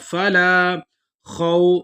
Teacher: لام کو ایک الف کی مقدار لمبا کر کے پڑھیں گے کیونکہ آگے الف مدہ ہے · واو سے پہلے زبر ہے، اس کو نرم پڑھیں گے